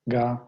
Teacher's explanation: object suffix, ga, comes with a low tone assigned to it, and it doesn't change. So it can't take any of the tones from the verb stem.